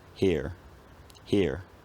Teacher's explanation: The r becomes an approximant, here, and maybe around the same time or shortly after, the vowel sequence collapses into a centering diphthong